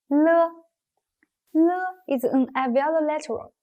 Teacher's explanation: but slightly more to the back than the position for Mu the Airstream is released from the side of the tongue